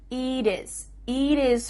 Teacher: Here, the final T is changing to a D.